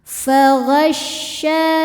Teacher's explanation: ketika kita menekan huruf shin terdengar ada suara angin yang menyebar di dalam mulut, namanya tafashi ya.